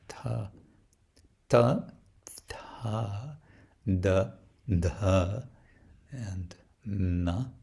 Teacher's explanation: And then there's the dentals with the tongue behind the upper teeth